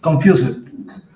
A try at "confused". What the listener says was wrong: Suavecito, pronuncias una T. Confused.